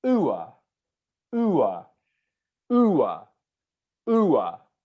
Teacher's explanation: And can you hear there, just as I explained with all the other diphthongs, the oo was louder and longer than the schwa sound behind it